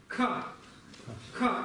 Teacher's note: То есть выброс воздуха у нас немного сильнее, чем обычно. Очень часто мы этого не замечаем, то есть для русского языка в принципе этот звук не очень привычен. · Но это аспиративный звук, то есть он произносится с придыханием. То есть вы можете поставить перед собой ладошку.